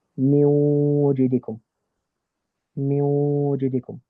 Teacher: Idgham with Ghunna, so that is if Nun Sakin or Tanween is followed by Ya, Nun, Mim, or Waw, then it's going to, what we're going to do is we're going to skip the N component of the Nun, but we're still going to keep the Ghunna component of the Nun, and thus we would pronounce the Ghunna but without the thing.